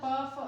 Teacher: प वर्ग मतलब ओष्ठ से